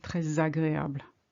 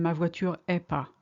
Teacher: because we like to link, it's easier to say ma voiture n'est pas rather than ma voiture est pas